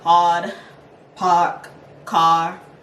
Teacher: If it's too open, it will start sounding Boston, so make sure this one's a rounded, vowel sound. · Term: pushed AR